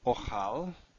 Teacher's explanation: Achal, if you were to add the aleph, that's the prefix, to the first root, which is also an aleph, what happens is the quiescent aleph drops, or it just becomes ochal